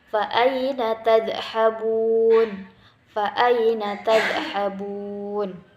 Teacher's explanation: Nah, di situ perhatikan huruf-hurufnya menggunakan dha. Dha itu bukan huruf qalqalah, jadi jangan dipantulkan.